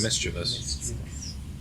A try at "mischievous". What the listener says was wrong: not another I-O-U-S in there. It's not. It's M-I-S-C-H-I-E-V-O-U-S.